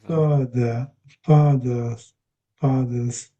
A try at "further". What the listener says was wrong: Yes, it's not really father. So if that was an A, if there was no it would be father, if there was no A, like daddy.